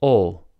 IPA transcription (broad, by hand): o